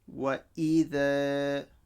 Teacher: So this is a mad asli, alif stretches the fatha. La, and this qaf joins onto the lam mushaddada over here.